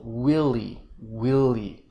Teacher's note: clear stress on the first syllable